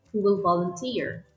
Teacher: If the question begins with a WH word, such as which, where, what, why, when, or how, the intonation will go down on the last syllable of the last word